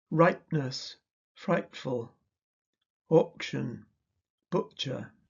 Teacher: The glottal stop is never a phoneme of English. In modern RP, there is often glottal reinforcement of p, t, k, ch. The consonant is preceded by a glottal stop.